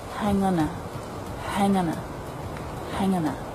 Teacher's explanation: So the article links straight on behind. It's just a schwa. It's unstressed.